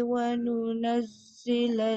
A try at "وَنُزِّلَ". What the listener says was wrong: Tak ada dua titik tu, satu zai, satu nun. Nun satu je. Wa nuzzilal.